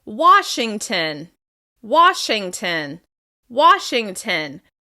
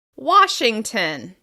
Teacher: You can really hear the reduced syllable at the end of the word.